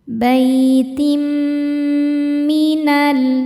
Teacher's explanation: Berikutnya ada idgham bi gunnah karena ada tanwin kasrah menghadapi huruf mim. Cara bacanya tanwin dimasukkan ke mim kemudian tahan dengungkan. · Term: idgham bighunah